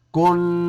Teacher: نون کے اوپر شدہ ہے اس لیے ناک میں آواز لے جائیں گے